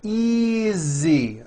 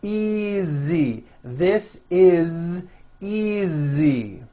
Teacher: Again, the S is like a voiced Z.